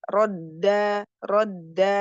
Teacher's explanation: dal ee bertasdid ada sifat syiddah di tahan